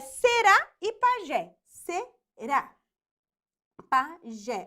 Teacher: última sílaba a mais forte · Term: oxítonas